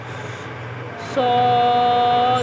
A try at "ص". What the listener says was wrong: سو نہیں. کی سٹی نکالو پہلے.